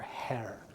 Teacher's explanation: the H is not really a consonant it's more like a puff of air